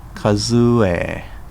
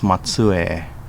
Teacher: The words that end with a short E vowel sound will become a long E vowel sound.